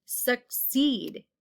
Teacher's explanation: the e sound is in that second syllable and it's long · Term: long e